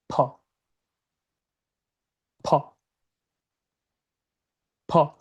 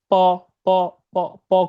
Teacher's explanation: 2টা ঠোঁট একসাথে লাগবে, অ্যান্ড দেন ভিতর থেকে আমরা একটা বাতাস বের করব, মানে ফোর্স করে বাতাস বের করব।